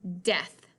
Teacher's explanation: it does not say that long vowel sound it doesn't say e it says the short vowel sound